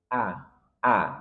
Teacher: huruf hamziah keluar dari pangkal tenggorokan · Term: hamzah